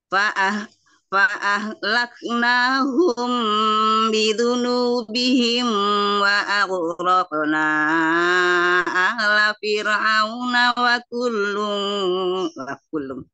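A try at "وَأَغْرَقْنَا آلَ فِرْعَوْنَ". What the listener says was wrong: Wa agh, kenapa ikutan mantul sama qaf? Wa aghraqna, kemudian ala, bukan ala. Kenapa jadi ain? Ala, makanya buka ala.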